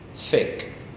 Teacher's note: the tip of my tongue it's in contact with my teeth